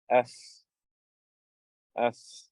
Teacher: the letter fa, the upper two incisors, the tips with the inside of the bottom lip.